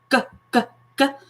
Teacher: The difference between the K and G sounds being that when you produce the g, g, g sound, your vocal cords are working. So the way that we explain it to kids is saying that you're turning your voice box on. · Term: voiced sound